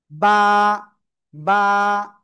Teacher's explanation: দুই ঠোটের ভিজা অংশ থেকে ভিতরের অংশ থেকে। জাস্ট এক আলিফটা নিয়ে উচ্চারণ করব।